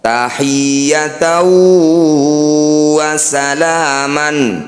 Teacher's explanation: bunyi fathah tanwin masukkan pada huruf wau dengungkan dua harakat